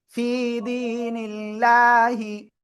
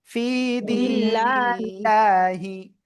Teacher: আল্লাহ শব্দের লামের ডাইনে জের চিকুন করে পড়তে হবে